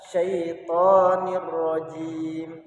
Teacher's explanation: Akan tetapi ketika dibaca syaitonir rajim, jadi seakan-akan baris daripada kasrotain ini dihilangkan satu sehingga rohnya jadi tasdid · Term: idgham bila gunnah